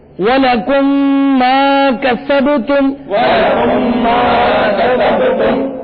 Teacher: یہاں پر میم ساکن کے بعد میم آ رہا ہے، اس لیے یہاں پر ادغام شفوی ہوگا اور غنہ کریں گے